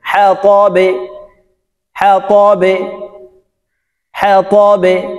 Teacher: বা নিচের দিকে ধাবিত করে উচ্চারণ করতে হবে। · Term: কলকলা